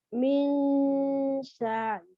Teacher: Jadi ketika mengucapkan nun sukun itu lidahnya sudah mengarah ke makhraj huruf sesudahnya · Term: ikhfa